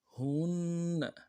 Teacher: ہا کو نون کے ساتھ ملانا ہے، نون کے اوپر تشدید زور دیں گے، اگلے نون کو نرم سے ادا کریں گے